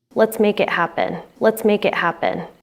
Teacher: This phrase has a falling intonation pattern signaling. It's a statement and that there's kind of confidence or finality.